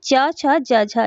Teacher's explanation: जिन व्यंजनों के उच्चारण में पहले स्पर्श फिर घर्षण की स्थिति पैदा होती है उसे स्पर्श संघर्षी कहा जाता है।